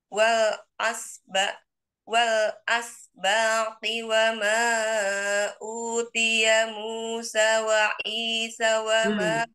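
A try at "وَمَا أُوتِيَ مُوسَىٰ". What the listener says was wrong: Musa panjangkan dulu sinnya Musa.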